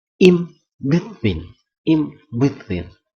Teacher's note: in becomes im when it precedes a bilabial sounds